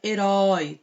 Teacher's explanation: termina com um ditongo tá ui a gente quase não escuta herói é tão aberto esse ó